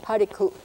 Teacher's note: It's a little catch in your throat at the end. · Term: glottal stop